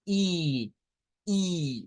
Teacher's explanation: es una I redonda la i redonda es igual que la i nuestra